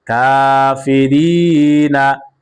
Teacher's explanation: কাফের উপরে খারা জবর আসার কারণে এক আলিফ টান হবে